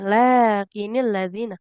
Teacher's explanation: lam fathah di depannya ada alif ada alif kecilnya. Maka di situ panjanglah dua harakat.